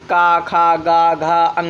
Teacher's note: और ये कहाँ से बोले जाते हैं, तो ये सब कंठ से बोले जाते हैं। आ और का वर्ग पूरा, हा और विसर्ग, ये जो है कंठ से बोले जाते हैं